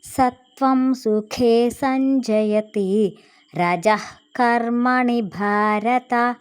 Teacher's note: కాముందల విసర్గ half H sound పలికాము